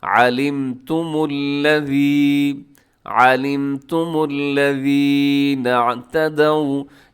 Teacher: یہ آپ نے اس میں لام باریک رکھنا ہے